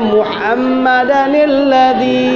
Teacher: Kalau seperti ini tanwin bertemu dengan huruf mati dibaca ada nunnya ya tapi nunnya berbaris kasrah.